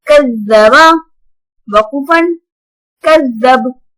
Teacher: اب میں نے زال کو بہت نرمی سے پڑھا ہے کیونکہ یہ زال ہے نہ کہ زا ہے